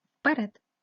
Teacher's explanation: звук е вимовляється наближено до и